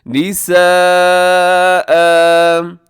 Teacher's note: دو زبر کو اپنے کیسے الف مدہ کی طرح اسے آپ کھینچ کے بولیے گا وقف میں